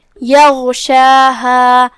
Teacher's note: غین کی ادائیگی حلق کے اوپر والے حصے سے ہے، وہ حروف التفخیم میں سے بھی ہے اور جو کہ اس پہ جزم ہے، لہذا ہم اسے جزم سے ادا کریں گے اور بھاری آواز میں بھی. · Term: حرف الغین